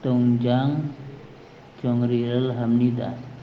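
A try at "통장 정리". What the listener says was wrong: Jongni ya, bacanya Jongni bukan Jongri.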